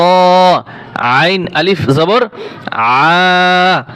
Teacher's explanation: আইন গলার ভিতরে চাপিয়ে বলতে হয়